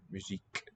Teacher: The final E is not even sounded anymore. Musique. The K is the last sound.